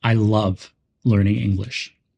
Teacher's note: in I love learning English, we stress love and English.